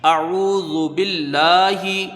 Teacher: ہوگا، حمزہ کے اوپر زبر ہے، اس کو جلدی پڑھیں گے، عین کو واو سے ملائیں گے، یہاں واو مدہ ہے، ایک الف کی مقدار، اس کو کھینچ کے پڑھا جائے گا ، زال کے اوپر پیش ہے، اس کو جلدی پڑھا جائے · کو جلدی پڑھا جائے گا، با کو لام سے ملائیں گے، لفظ اللہ سے پہلے یہاں زیر ہے، لفظ اللہ کا لام باریک پڑھا جائے گا ، لام میں کھڑا زبر ہے، کھینچ کے پڑھیں گے، ایک